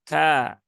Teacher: Kemudian kana, kaf dia punya sifat hams ya